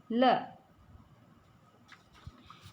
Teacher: ल का जो उच्चारण स्थान है वो क्या होता है, दंत